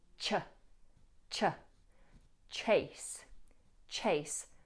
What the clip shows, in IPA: tʃeɪs